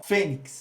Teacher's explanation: O fê, que é a sílaba tônica, tornando assim uma paroxítona, por quê? Porque é a penúltima.